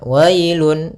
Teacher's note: ada bacaan lin, yaitu pada lafal wa ketemu dengan huruf ya sukun, maka dia lembut